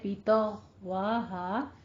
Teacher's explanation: غائن کو ہم ادنا حلق سے ادا کریں گے